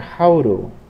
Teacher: ahora la letra d suena como r y se juntan